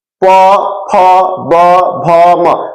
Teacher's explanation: हमारा दोनों ओठ सट रहा है ना, तो ओठ से बोलते हैं